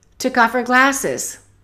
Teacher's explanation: let's connect took off and let's eliminate the H of her